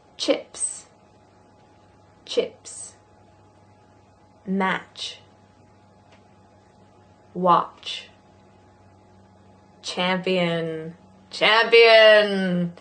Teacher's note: So we just did zh, which is the voiced version, but ch is not voiced.